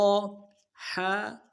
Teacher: ح گہرائی اور جماؤ کے ساتھ ادا کریں گے. وسط حلق، حلق کا وہ درمیان والا حصہ وہاں سے ادا ہوگا جماؤں کے ساتھ.